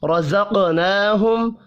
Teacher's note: ومما، میم مشدد پر غنہ کریں گے، الف مدہ کو 1 الف کے برابر کھینچ کر پڑھنا ہے۔ رزقناہم، را کو اور قاف کو پر پڑھیں گے، قاف ساکن ہے، قلقلہ بھی کیا جائے گا